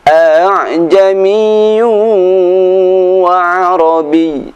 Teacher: membaca hamzah yang kedua pada lafadz a'jamiyu dengan suara yang ringan. Terdapat di satu tempat surat Fussilat ayat 44. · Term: tashil